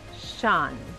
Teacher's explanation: la O se pronuncia como la A del español, pero es más relajada. Se pronuncia muy sutilmente, muy suavemente la U antes de la A, pero es muy suave.